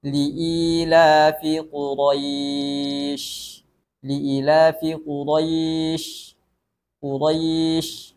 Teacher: huruf syin berada di akhir ayat dan dibaca dalam keadaan sukun jadi ada aliran suara dan nafasnya agak dipanjangkan sedikit